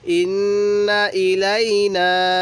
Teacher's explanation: নুনের মধ্যে তিন আলিফ টান দিব